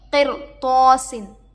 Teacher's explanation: رائے ساکنہ کے بعد حروف مستعلیہ میں سے تو آ کر ہے، اس لیے ہم یہاں پر رائے ساکنہ کو پر پڑھیں گے